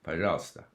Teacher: the unaccentuated syllables with O are pronounced A